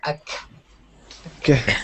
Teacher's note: with a K sound, you're not going to have as much reverberation or vibration. Like I said, it's voiceless